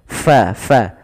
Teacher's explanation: fa alirkan nafasnya, fa, jangan dibaca pa